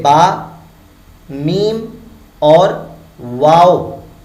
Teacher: شفویہ یعنی یہ تینوں لیٹرز جو ہیں یہ ہونٹوں سے ادا ہوتے ہیں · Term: لیٹرز آف شفویہ